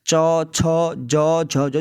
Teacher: तो ये आप महसूस करोगे ना, तो ये कहाँ से आती है, तालू से आती है, ठीक है। च छ ज झ जो हमारी जीभ है ना, वो ऊपर तालू से लगती है, ठीक है, मुंह के ऊपर वाले हिस्से से तालु से स्पर्श करती है, तब जाके हम ये व्यंजनों का उच्चारण कर पाते हैं दोस्तों। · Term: च वर्ग